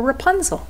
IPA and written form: rəˈpʌnzəl (Rapunzel)